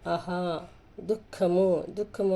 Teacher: దు పక్కన రెండు సున్నాలు వచ్చాయి చూడండి దుఃఖము అనేది కూడా గురువు అంటే విసర్గతో కూడిన అక్షరాలన్నీ కూడా రెండు మాత్రల కాలంలో పలుకుతాయి